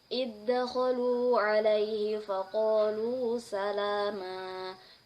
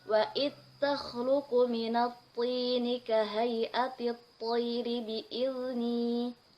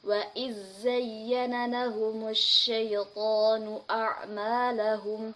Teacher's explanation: Imam Al-Kisai mengidghamkan huruf zal ketika huruf zal sukun bertemu dengan huruf zai, sin, shad, ta, da, dan dal. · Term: idgham shagir